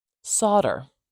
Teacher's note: we're not saying that l sound we are starting with a s saw saw a a now